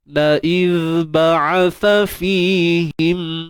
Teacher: Untuk huruf zal, tuan-puan, jangan lupa keluarkan sedikit hujung lidah kita. Kita keluarkan sedikit hujung lidah kita. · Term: sifat rakhawah